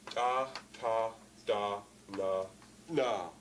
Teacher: All played at the same part of the mouth. They are coronal sounds, tongue tip sounds.